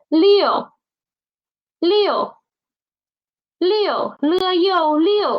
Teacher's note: Okay, next one 6 The initial is l, and the final is u. Please don't pronounce the initial as n. Okay, it's not n. Don't use your nose. It's l.